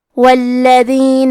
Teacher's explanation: کلمت والذین میں حرف اللام پہ تشدید ہے تو ہم 2 حرف کے برابر حرف اللام کو پڑھیں گے کیونکہ تشدید کی اصلیت 2 حرف ہے.